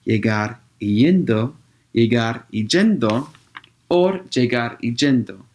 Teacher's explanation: Un dialecto puede pronunciar ella y y con el mismo sonido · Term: yeísmo